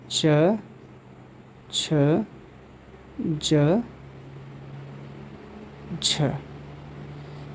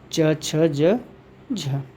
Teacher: इन्हें स्पर्श संघर्षी व्यंजन वर्ण कहा जाता है